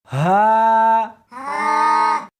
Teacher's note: اس حرف کو سینے کے اندر سے نکالنا ہے۔